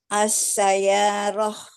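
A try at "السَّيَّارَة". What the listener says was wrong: Ingat ada tasdidnya. As-sayyarah. Ya-nya bertasdid. Double. As-sayyarah. As-sayyarah.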